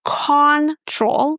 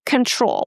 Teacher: we don't pronounce it as O or aw, we pronounce again the shwa sound. So it's not control, it's con con very short neutral sound.